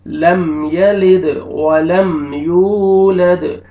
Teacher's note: اب دیکھیں میم ساکن کے بعد یا ہے، آپ نے لم نہیں پڑھنا. لم یلد، دال پہ قلقلہ کریں گے، ڈبل ساؤنڈ آئے گا